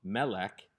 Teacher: segol as the second vowel segalites can be identified because they have the accent on the first syllable rather than the second hence the little carrot symbol on the mem and the segwhole